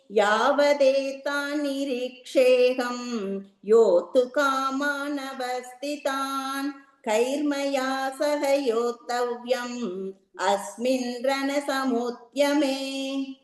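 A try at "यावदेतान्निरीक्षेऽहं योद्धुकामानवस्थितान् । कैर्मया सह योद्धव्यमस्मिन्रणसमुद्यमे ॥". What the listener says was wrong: Beautiful. Next.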